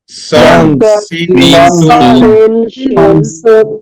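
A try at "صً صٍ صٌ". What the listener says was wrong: সন সিন সুন। আর একটু মোটা হবে। সদ সিন ঝা। সদ এটা হচ্ছে জিহ্বার আগা সামনে নিচে দুই দাঁতের আগার দিকে লাগানোর চেষ্টা করব। জিহ্বার আগা সামনে নিচে দুই দাঁতের আগার দিকে।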